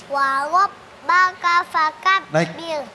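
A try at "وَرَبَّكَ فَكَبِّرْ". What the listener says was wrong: Naik tapi belum nyentuh ke langit-langit ya.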